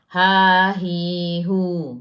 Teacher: Makhraj huruf ha, kalau kita dekat dengan leher kita ni, tekak kita ni, paling bawah. Kalau kita rasa dengan tangan kita tu, yang kat leher kita tu, dia ada orang kata tulang ke apa, yang dua tu, dia kat situ.